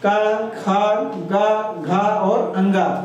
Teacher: कंठ के अंतर्गत पूरा संपूर्ण क वर्ग आता है का ख ग घ और अंग